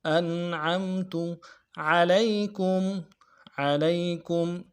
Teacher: انعمت علیکم عین کو موٹا ادا کرنا ہے